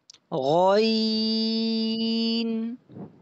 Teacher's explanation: غین کو موٹا کرنا ہے لیکن ہونٹوں کو گول نہیں کرنا